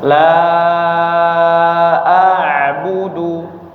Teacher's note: dibaca panjang empat atau lima harakat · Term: mad munfasil